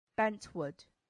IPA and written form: ˈbɛntˌwʊd (bentwood)